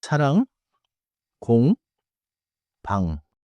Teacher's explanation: Do not release the back of the tongue into a strong G.